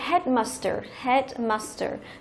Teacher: Thì đây là danh từ ghép cho nên là thông thường với danh từ ghép thì trọng âm chính của từ nó sẽ rơi vào thành phần đầu tiên, tức là rơi vào cái head